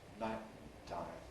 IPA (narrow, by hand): ˈnaɪʔtaɪm